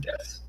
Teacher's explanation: a lot of SUs in Japanese, you can kind of get rid of the U. So like DESU, like desu. · you just like elongate the S a little bit and just make it like a s.